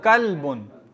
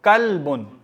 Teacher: इसका लाम भी साकिन है, कलब नहीं पढ़ेंगे